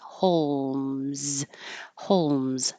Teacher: this L is a dark l so you don't have to make a perfect l in the front the middle of your tongue can just rise